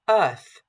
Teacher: we know that the th in the word Earth is pronounced voiceless